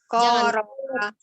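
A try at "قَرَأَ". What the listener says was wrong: Jangan dibaca qoro'a. Kalau qoro'a itu kan ketarik ko-nya jadi dia panjang. Qoro'a.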